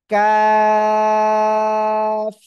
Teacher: জিহ্বার গোড়া থেকে একটু আগে বাড়াবো বাড়িয়ে আমরা উচ্চারণ করব